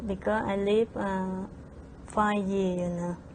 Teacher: replaces the V sound in live with the B sound when she says lib and drops the final V in five altogether